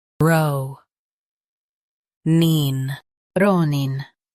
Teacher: Stress ro and soften nin.